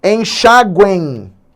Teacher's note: Então ele conta como uma semivogal, fazendo exatamente o que a gente chama de um encontro, né, de um dígrafo vocálico. E esse é um tritongo nasal, porque a terceira letra é exatamente a nasalização.